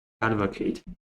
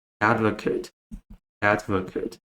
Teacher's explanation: the difference is that the long A sound becomes the first schwa sound